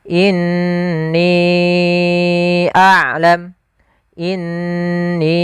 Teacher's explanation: Kemudian ni-nya juga kesalahan. Di sini ada hukum tajwid berupa mad jaiz munfasil, yaitu kita panjangkan 4 atau 5 harakat.